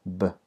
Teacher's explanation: have B which is just like the p and happy but it's voiced there's vibration